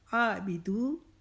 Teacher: اور بی کو لمبا نہیں کریں گے، دو کو 1 الف کے جتنا کھینچیں گے